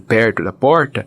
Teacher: o dito r retroflexo esse dito R caipira